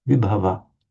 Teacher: I don't feel reluctant to stress the vi there, vibhava.